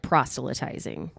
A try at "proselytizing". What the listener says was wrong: I think the T is silent. I think it's proselytize. Proselytize.